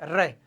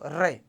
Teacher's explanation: जो फेफड़े से उठने वाली वायु है वो जीभ के ऊपर से लुढ़कते हुए बाहर आ जाती है। जैसे जीभ कंपन करती है तो उसके ऊपर से लुढ़कते हुए बाहर आ जाती है, रह। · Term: लुंठित